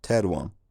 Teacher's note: that final nasal gets absorbed into the vowel, producing a nasal vowel. Older speakers might have noticed younger speakers pronouncing teran as teran.